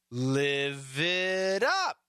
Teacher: We got a V connecting, a T turns into a flap T. It sounds like a D.